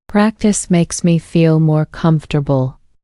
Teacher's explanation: Notice how the word practice has its stress on the first syllable, and comfortable has its stress on the first syllable too.